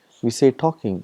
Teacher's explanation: For example, in English we got, for example, talking, we say talking, but when you write, we write L, tall king, but we don't pronounce L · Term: silent L